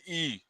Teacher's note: तालू में दीर्घ स्वर मतलब लंबे स्वर जैसे ई